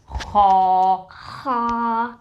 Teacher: It's Kha, comes from the top of the throat, which is really close to the mouth.